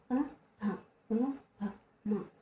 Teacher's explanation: ఓస్ట్యాలు అంటే పెదవుల నుంచి పుడుతున్నాం కాబట్టి ఓస్ట్యాలు అన్నాం.